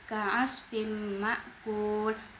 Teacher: huruf fa yang berharokat kasrotain bertemu dengan mim, maka hukum tajwidnya adalah idgham bi gunnah, dibaca dengung sampai 2 harokat.